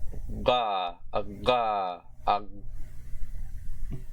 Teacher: next we have G, or the voiced velar plosive consonant. English normally makes its velar plosive slightly forward, which is weird.